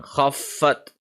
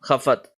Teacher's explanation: So we have stayed on the Fa for half a second. Khaffat. This is not Khafat. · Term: Tashdeed